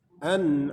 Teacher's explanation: Nun mati berjumpa dengan ain, izhar. Izhar dibaca jelas. An'am, mad arid lisukun.